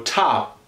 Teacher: they sort of make a P but they don't explode it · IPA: tʰɒp